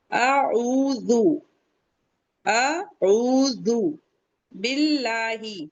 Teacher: अल्लाह का लाम बारीक पढ़ेंगे क्योंकि उससे पहले कसरा आ रहा है। ज़ेर आ रहा है। · اللہ کا لام باریک پڑھیں گے کیونکہ اس سے پہلے کسرہ آ رہا ہے، زیر آ رہا ہے.